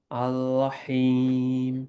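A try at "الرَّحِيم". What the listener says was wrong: Make the Ra heavy. Ar. So Ra and Lam and Seen, they're all like from the tongue, from the similar area. So sometimes the tongue shifts. So for the Ra, imagine this is your tongue, you're curling up ar.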